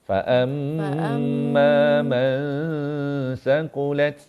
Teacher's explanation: Mim sabdu dengung. Man ni pun kena dengung.